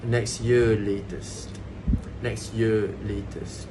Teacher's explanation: So falling intonation on the words year and latest.